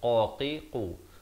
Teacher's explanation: qu di pangkal lidah kita